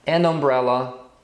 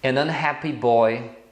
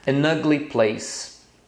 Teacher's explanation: Umbrella unhappy e ugly eu tô pronunciando com o som de a